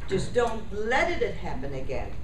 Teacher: you don't have to stress or emphasize happen or again